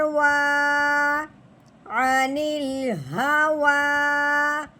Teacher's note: نون لام زیر نیل، عنیل، ہا کے اوپر زبر ہے، ہا زبر ہا، عنیل ہا، واؤ کے اوپر کھڑی زبر ہے، واؤ کے اوپر کھڑی زبر آنے کی وجہ سے واؤ کو ایک الف کے برابر لمبا کیا جائے گا، واؤ کھڑی زبر وا، عنیل ہوا، یہ یا نہیں پڑھی جائے گی۔